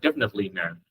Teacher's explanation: Cái từ definitely á, mọi người có thể đọc thành definitely, ba âm, definitely. Cái chữ net mọi người không có đọc chữ thờ đâu